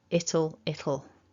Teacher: you get this flow of air that feels like it comes around the sides of the tongue